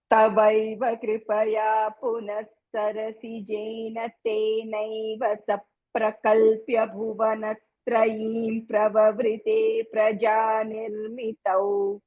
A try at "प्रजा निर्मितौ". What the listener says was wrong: ఒక్క ప్రజా నిర్మితం అన్నప్పుడు మాత్రం పకారం ఒక్కటే చెప్పి వదిలేశారు. 16,000 పకారాలు కావాలి నాకు.